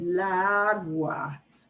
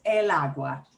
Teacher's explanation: Then you've got two ah sounds butting up against each other.